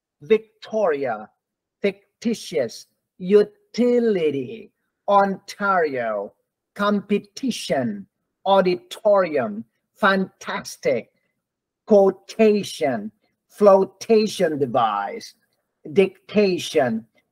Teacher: When the letter T is stressed, that T is always T, not D. It doesn't change to D.